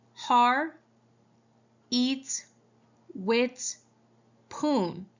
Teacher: Har, eat, wit, poon. The patient simplifies the consonant clusters in the word hard, dropping the D, and spoon, dropping the S, and then changing the th sound to a t sound in the word with.